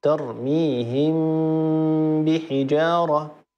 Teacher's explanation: فميم الساكنه بقيت منها غنتها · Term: الاخفاء